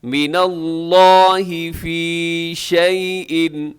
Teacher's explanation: لفظ اللہ کو موٹا پڑھیے گا، اس کو باریک نہ کیجیے گا